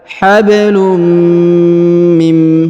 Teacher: huruf nun sukun bertemu dengan mim, maka nun sukunnya menghilang, melebur ke huruf mim, ya, tidak dibaca lagi huruf nunnya.